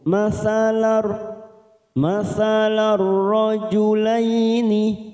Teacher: Lahum masalar, masalar, ada huruf lam berharokat fathah tanwin, fathatain yang bertemu ro, namanya bacaan idgham bila gunnah, hanya masuk tanpa mendengung